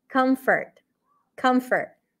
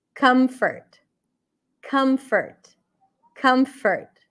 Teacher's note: Comfort would be a cup sound. Come and then a schwa.